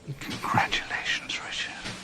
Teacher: It's just that very breathy whisper right at the end of it.